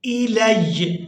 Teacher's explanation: وإذا تتلى عليهم آياتنا بينات قال الذين لا يرجون لقاءنا ائت بقرآن غير هذا أو بدله قل ما يكون لي أن أبدله من تلقاء نفسي إن أتبع إلا ما يوحى इलय। यहाँ पर वक़्फ़ करते हुए या के ऊपर ज़बर को अदा नहीं करेंगे